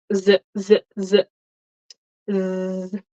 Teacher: Your tongue is not between your teeth, but there's buzzing.